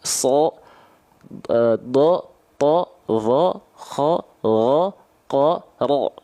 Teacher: Huruf tebal itu ketika fathah bunyinya O, seperti O.